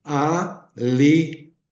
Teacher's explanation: eu abri a boca para o A, mas para o li, eu levantei a língua, li, cá, a boca já estava aberta, li, cá, T.